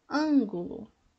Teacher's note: ângulo é a antepenúltima confere com proparoxítona